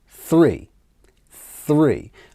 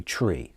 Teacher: for this one I'm going to give you a tip immediately the th sound tongue between the teeth